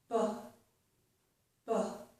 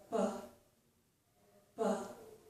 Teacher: I stop the air and then I let it come out forcefully.